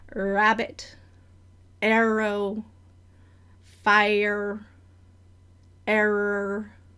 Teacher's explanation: It's mostly back, but there's a little bit of retroflexion, especially as I'm ending words.